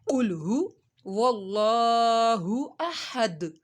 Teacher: قل ہو کو ہم نے کھینچنا نہیں ہے، ہا پیش ہو.